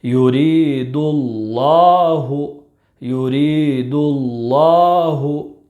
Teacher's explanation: لفظ اللہ کے لام سے پہلے پیش ہے، اس لیے لفظ اللہ کے لام کو پر یعنی موٹا پڑھیں گے،